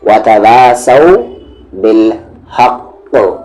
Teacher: Heaviest قلقلہ ہوگا، یعنی کہ آواز کو باؤنس بہت اچھے طریقے سے کریں گے، جیسے یہاں پر بالحق، قاف پر اس طریقے سے بالحق۔